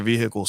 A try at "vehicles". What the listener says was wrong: you pronounce the h so harshly